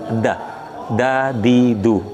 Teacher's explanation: bunyi udaranya tertahan, da, jadi udaranya tertahan, suaranya juga tertahan · Kemudian istifal lidahnya, walaupun dia menyentuh ke atas tapi tidak tegang dan tidak isti'la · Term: huruf dal